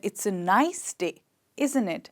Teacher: voice has gone from up to low. It was increased in the beginning when I said it's a nice day, isn't it?